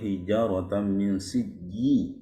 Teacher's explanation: Posisi huruf jimnya itu belum pas ya, makanya keluar angin siji ya. Coba di tengah-tengah lidah ya.